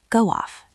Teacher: There's a little W sound in the middle.